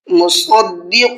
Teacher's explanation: صاد کو منہ بھر کے پڑھنا ہے اور قاف کو بھی منہ بھر کے پڑھنا ہے